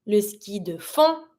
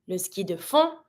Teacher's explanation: don't pronounce the D